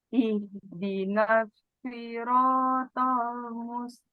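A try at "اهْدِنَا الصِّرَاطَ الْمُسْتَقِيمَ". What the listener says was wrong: Nah, shotnya ya, PR juga. Si masih terbaca seperti sin. Ihdinas ihdinas siratal mustaqim. Masih sin ya Bu ya.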